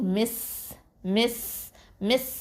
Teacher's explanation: அடுத்தது மீம் கெஸ்ரா சீன் சுக்கூன் மிஸ் மிஸ் மிஸ் அப்படின்னு சொல்லும் போது இந்த சீன் சுக்கூன் ஹம்ஸ் பண்ணணும், காற்று நல்லா வெளியில் விடணும்